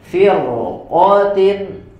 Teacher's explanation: Yang ketiga adalah firqah, firqatin setelah ro sukun, walaupun sebelumnya didahului oleh kasrah, tapi karena setelahnya huruf isti'la maka dibaca dengan tebal